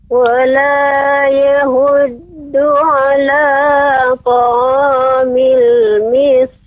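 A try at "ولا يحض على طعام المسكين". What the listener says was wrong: Ya, pengucapan ya wala yahuddu masih terdengar huruf besar. Wala yahud, yahud yang benar, yahud, yahud ha kecil. Ha, hi, hu, ah. Wala yahuddu ala. Kemudian huruf pengucapan sin, sinnya lebih tipis, miskin.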